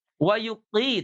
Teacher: huruf qof ini termasuk huruf istiala. Jadi dia dibaca tebal. Wuqi tidak wukqi.